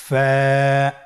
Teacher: ফা হরফটি উচ্চারণের ক্ষেত্রে বারিক হবে এবং এক আলিফ টেনে পড়তে হবে।